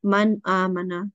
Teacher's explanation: we make no nasal sound, but we just say it as a clear noon sound